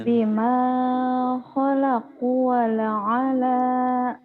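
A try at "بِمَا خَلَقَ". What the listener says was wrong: bima khalaqo bukan khalaqu ya.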